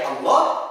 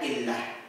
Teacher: Itulah pengucapan lafaz Allah. Ada dua, yang pertama tebal, yang kedua tipis.